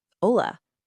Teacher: And remember that H is completely silent. Don't pronounce it.